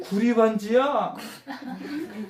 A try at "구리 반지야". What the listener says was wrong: 이거 웃으면서 하면 안 돼.